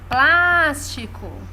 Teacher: Plas é a sílaba tônica